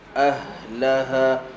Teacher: Ha ada hams, maka berikan hams pada ha.